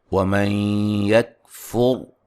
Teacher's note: کو موٹا ادا کریں، قبل، ٹھیک ہے جی۔ وَمَن يَكْفُرْ یہاں نون ساکن کا ادغام مع الغنہ ہے ، اور را کو موٹا ادا کریں گے، را ساکن سے